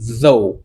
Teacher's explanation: C'est comme si vous mettez la langue entre les dents. Ouais, c'est plus O.